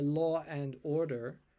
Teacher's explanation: an American would say Law and Order but they would not put an r in the middle there